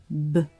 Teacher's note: B is voiced, B, meaning you make a sound with the vocal cords